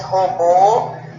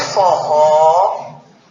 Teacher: na letra robô, o som do O está fechado, né? O som fechou. E na letra forró, o som da vogal abriu. Então a diferença é que o som está fechado e a outra, o som está aberto.